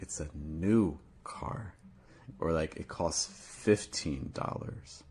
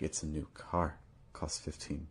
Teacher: we're not actually going to put the weight generally on the adjective. Instead, it's going to go on the noun.